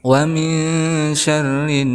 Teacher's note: ada nun sukun bertemu dengan huruf ikhfa yaitu sya. Maka hukumnya ikhfa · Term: ikhfa ausat